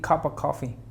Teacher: no digas la F, no digas el sonido de la V.